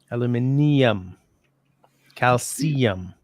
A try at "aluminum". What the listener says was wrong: you're putting an extra eye in there that doesn't that isn't in there